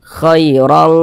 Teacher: Tapi kalau ikhfa hakiki ab'ad ya, hurufnya ada 2, qaf dengan kaf, maka ketika kita mengucapkannya itu dia condong berbunyi eng